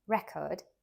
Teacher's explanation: a noun record stressed on the first syllable